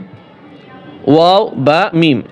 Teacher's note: 15 number মাখরাজ দুই ঠোঁট হইতে